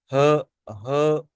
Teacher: इसको ग्लोटल, ये हलक से निकलती है आवाज, इसको हम ग्लोटल साउंड भी कहते हैं।